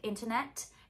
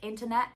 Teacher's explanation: the last T could be a true T, like internet. It could be a glottal T, like internet.